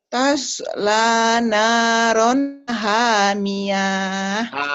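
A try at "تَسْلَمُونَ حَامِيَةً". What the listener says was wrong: Pendek. Kenapa panjang? Ayo, kenapa panjang? Kan nggak ada. Hamiyah bukan haniyah ya. Hamiyah. Kedengarannya kayak haniyah. Tapi mulutnya mungkin kurang ngebuka kayak haniyah. Hamiyah ya.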